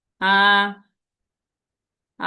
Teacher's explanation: first টোনটা বলার সময় আমাদের শব্দটা কি ফ্ল্যাট ভাবে যাবে